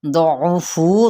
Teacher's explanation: दौफू, दौद हरूफ मुस्तालिया में से है, आइन को वस्ते हलक से अदा करना है, लेकिन इसकी पेश को लंबा नहीं करना